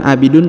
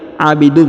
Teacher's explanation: huruf tanwin UN bertemu dengan mim bertasdid maka didengungkan dan ditahan serta ditekan ya pada huruf mim